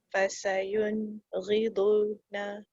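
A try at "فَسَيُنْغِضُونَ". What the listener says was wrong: Du dia panjangkan pasal dia waw.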